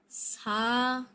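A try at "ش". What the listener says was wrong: সা হবে না তিন দাত থাকলে সা হবে না এক দাত হলে সা হবে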